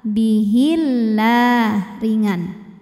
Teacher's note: Lam jalalah dibaca secara tarqiq sebab didahului harokat kasrah, maka huruf lam dibaca tipis, bunyinya lah.